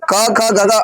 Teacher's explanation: तो जब क ख ग अंग का उच्चारण करेंगे तो जीभ किसको टच करके बाहर निकलेगी कंठ को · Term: कंठ वर्ण